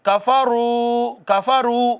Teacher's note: واو ساکن ہے، پیچھے پیش ہے تو یہ بھی واو مدہ ہے، اس کو بھی ایک الف کے برابر کھینچا ہے